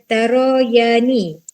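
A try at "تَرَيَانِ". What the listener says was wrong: Ro tu pendek je.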